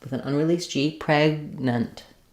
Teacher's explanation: I close off either in my throat or lifting the back of my tongue for that g sound. And then I just release right into the n of the next syllable. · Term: unreleased stop consonant